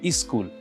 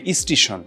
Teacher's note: উচ্চারণের সুবিধার জন্য অনেক সময় যেটা হয় যে শব্দের আদিতে একটা স্বর চলে আসে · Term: আদি স্বরাগম